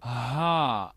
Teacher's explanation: es más vibrando la zona, digamos, de nuestra faringe. Y esta es esto que se le conoce como el glottal stop. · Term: la H vibrante